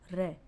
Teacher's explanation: दो से तीन बार कंपन करना पड़ता है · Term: प्र कंपित